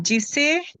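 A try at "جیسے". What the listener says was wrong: ना जिसे होगा तो फिर जे, जे के नीचे जबर होता है, सॉरी जेर होता है।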